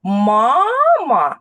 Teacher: сильніше голосом ми виділяємо перший голосний звук а у цьому слові відповідно на нього падає наголос це перший склад у слові мама тому ми кажемо що перший